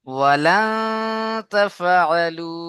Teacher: ওয়ালা গুণনা করতে হবে, কারণ নুন সাকিনের ইকফা পরে আছে